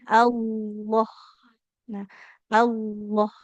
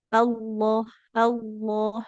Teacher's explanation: Jadi tidak maju bibirnya. Lamnya tebal tapi tidak membuat bibir kita jadi maju ya.